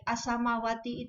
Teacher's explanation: Apabila ada alif lam bertemu dengan huruf ta, sa, shod, ro, ta, zain, dal, sin, nun, dal, shin, dot, zo, lam, maka huruf lam dibaca lebur atau hilang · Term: alif lam samsiah